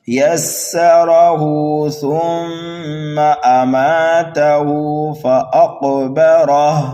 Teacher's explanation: ہا کو کر دیں گے ساکن، یہاں پر ہوگا وقف بالاسکان، ملا کر کے پڑھیں گے تو پھر ہا کو کھینچیں گے ایک الف کے برابر